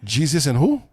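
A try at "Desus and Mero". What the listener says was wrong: Jesus with a D, like Darrow.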